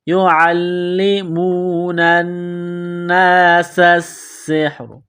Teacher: ہے۔ يُعَلِّمُونَ النَّاسَ السِّحْرَ، نون کو نون کے ساتھ ملانا ہے، نون مشدد ہے، غنہ کریں گے، آواز ناک میں چھپائیں گے ، سین کو باریک کرنا ہے، سین میں سیٹی کی آواز · عین کو لام کے ساتھ ملانا ہے، لام کو دبانا ہے